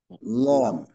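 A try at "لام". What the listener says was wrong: লাম। আচ্ছা, ল যেন না হয় লাম। আচ্ছা, লামের উচ্চারণটা আলহামদুলিল্লাহ আমাদের জন্য সহজ, তবে এতটুকু খেয়াল রাখবো যেন লামের উচ্চারণের শেষের দিকে জিহ্বাটা নিচু হয়ে না যায়, জিহ্বার আগাটা নিচে না পড়ে উপরেই রাখা।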